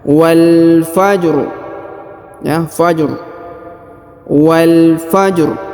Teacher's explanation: Jadi ro-nya agak dipertebal, ya.